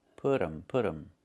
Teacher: It's put them. We make a reduction. We say put 'em. The T changes to a fast D.